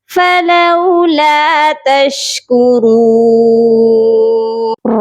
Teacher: را کو موٹا کر کے پڑھا جائے گا